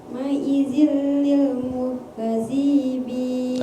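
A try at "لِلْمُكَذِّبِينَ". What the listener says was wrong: Nah, itu yang panjangnya bi bukan di. Lil mukadzibin.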